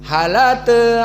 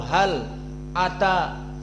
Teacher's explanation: Di mana lam sakinah hal bertemu dengan a hamzah ata, maka di qiraah Wars an-Nafi' dihilangkan hamzahnya. Lalu fathah di dalam hamzah dipindahkan ke lam. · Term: an-naql